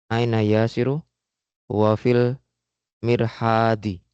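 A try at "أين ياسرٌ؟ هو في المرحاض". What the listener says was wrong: Ditanwin ya Mas. Aina yasirun. Ulang lagi.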